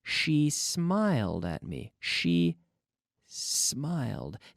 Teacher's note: The S begins in my mouth, not in my vocal cords. There's no vibration of my vocal cords.